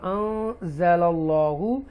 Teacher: اللہ کو تفخیم کے ساتھ پڑھیں گے، بولڈ پڑھیں گے